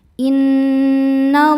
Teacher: Lam jalalah dibaca tafkhim karena sebelumnya berharokat fathah. Cara bacanya lam dibaca tebal.